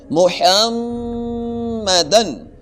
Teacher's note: محمد میں نے میم پہ غنہ کیا ہے، ناک میں تھوڑی دیر آواز کو روکا ہے. محمدن، وہ اس وجہ سے کہ میم کے اوپر شد ہے.